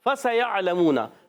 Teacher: فَسَيَعْلَمُونَ میں سین سیٹی کے ساتھ ادا ہوگا. یا کو عین سے ملا یعلمون، عین حلق کے درمیان والے حصے سے.